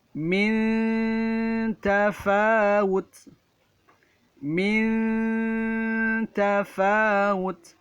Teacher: huruf nun yang disukunkan bertemu dengan huruf ta. Maka cara membacanya dengung, samar, dan tipis. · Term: ikhfa